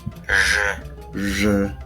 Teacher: So it almost sounds like a French sound. It's a je, like slightly at the back of the throat.